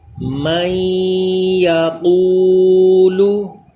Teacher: واو مدہ کا قاعدہ، اس کو بھی کھینچ کر ایک الف کے برابر پڑھیں گے